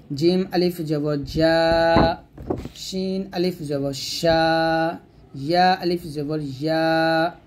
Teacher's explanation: জিম শিন ইয়া এই 3টে জিহ্বার মধ্যখান থেকে আমরা উচ্চারণ করব